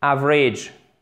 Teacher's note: le deuxième A, il est prononcé comme un I bref